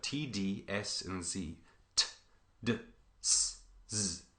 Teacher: All of these are tongue against alveolar ridge.